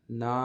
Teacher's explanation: نون کے بعد الف مدہ ہے، نا ایک الف کے برابر لمبا کریں گے. اس کو ہم ملا کے پڑھتے ہیں.